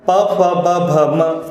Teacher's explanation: इनका उच्चारण करते समय हमारे दोनों ओठ स्पर्श करते हैं एक दूसरे को, इसलिए इन्हें कहा जाता है ओष्ठ्य वर्ण।